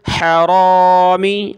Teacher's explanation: اس کو موٹا کر کے پڑھنا ہے اور ہا کو گلے سے نکالنا ہے